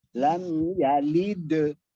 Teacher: hendaknya mengarah ke vokal A, bukan ke E. Contoh, lam yalid ke A, bukan ke E. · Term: bunyi qalqalah